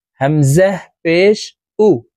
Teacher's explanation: এখানে আলিফ হরফ আছে, আলিফকে হামজা বলতে হবে, কারণ আলিফে হরকত ব্যবহার হইলে, অর্থাৎ এক জবর এক জের এক পেশ ব্যবহার হইলে আলিফকে হামজা বলে উচ্চারণ করতে হয়। হামজাহ পেশ উ, ঠোঁট গোল করে তাড়াতাড়ি করে উচ্চারণ করব।